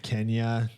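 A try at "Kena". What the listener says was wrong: It's not Kenya because no Y in it. There's no Y in it for a start.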